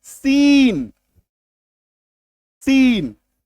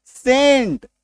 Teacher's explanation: इसको क्या बोलते हैं, दांत से निकला हुआ स, दंतन स बोलते हैं